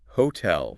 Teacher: the T is a proper T sound. It doesn't become that soft flapped T like in water or city.